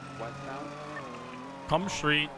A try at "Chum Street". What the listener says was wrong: The H is silent.